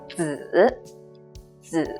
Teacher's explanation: When it's used as with the meaning that's related to son or child, it's the 3rd tone down and up.